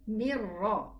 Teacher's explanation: the noon sukoon with the ra is idgham also, but with no ghunna.